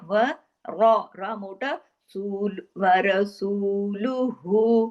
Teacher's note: सू को हमने दो हरकत खींचा वाव मत्ता की वजह से